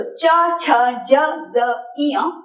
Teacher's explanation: च, छ, ज, ज, ञ बोलते वक्त जो साउंड है वो तालु प्रदेश में कैरम के जैसे स्ट्राइक करके वो साउंड आता है। इसीलिए ये पांच च वर्ग के व्यंजन तालु यानी कि तालव्य हुए।